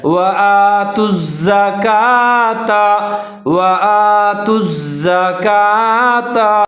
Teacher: الزَّكَاةَ۔ اب جو کا ہے اس کے اوپر کھڑا زبر ہے، کاف ہے، اس کو باریک کر کے پڑھنا ہے آپ نے، ایک الف کے برابر لمبا کر کے پڑھنا ہے